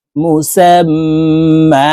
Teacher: এই সিন তাসদিদ ওয়ালা মিমের সাথে নাকের বাঁশি থেকে তিন সেকেন্ড পরিমাণ গুন্নাহ করে ধরে রাখবো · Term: ওয়াজিব গুন্না